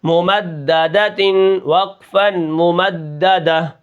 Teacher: میم کو میں نے بالکل نہیں کھینچا اور اس میم کو دال کے ساتھ میں نے ملا کر پڑھا ہے، کیونکہ دال کے اوپر تشدید ہے اور تشدید والے حرف کے اوپر زبر ہے.